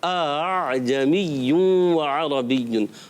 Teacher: دوسرے حمزہ کو نرم کر کے الف اور حمزہ کی درمیانی کیفیت میں لا کر اس کو عین سے ملاتے ہیں. اعجمی عربی. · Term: تسہیل